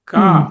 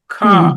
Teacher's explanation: కా అన్నప్పుడు వెనక్కి గాలి పీల్చుకోలేదు. ఖా అన్నప్పుడు ఉచ్చారణ అయిన తర్వాత గాలి వెనక్కి లాక్కుంటారు. గాలి మళ్ళీ తీసుకోవాలి. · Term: యాస్పిరేషన్